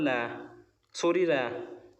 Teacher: और जो लुंठित वर्ण होता है ये होता है हमारा र